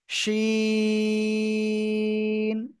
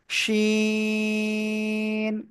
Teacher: ওই জিহ্বার মাঝখানে চলে যাব, তার বরাবর উপরে তালুর সাথে লাগাবো, শা শা শব্দ হবে